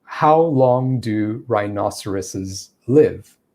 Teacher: i'm using a very slow cadence there where i am pausing in between each word